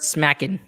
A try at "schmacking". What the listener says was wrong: It is no, not smacking. Schmacking. Schmacking. SCH. Schmack.